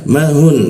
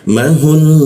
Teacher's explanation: nun tidak bertasjid itu dibacanya ya satu harakat ya. Kalau tidak ada tasdidnya ini maka dibacanya mahun ya.